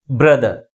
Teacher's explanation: First syllable second syllable కంటే ఎక్కువ ఫోర్స్గా పలుకుతుంది.